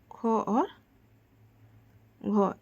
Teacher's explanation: महाप्राण जिनमें अधिक वायु निकले